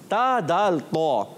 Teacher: इनमें ज़बान का सिरा, नोक भी कह देते हैं नोक, मगर नोक याद रखिए नोक के साथ सिरा यूज़ होता है। और सिरा ज़बान जब ऊपर के दांतों की जड़ों में लगती है तो अदा होते हैं ता दाल तो। और इसको कभी भी तो नहीं पढ़ेंगे। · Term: हुरूफे नितइया